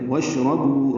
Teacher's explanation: شین ساکن ہے، اس پہ ہمس تفشی ہے ، واشربو را پر بو واو مدہ ہے، 2 حرکات لمبا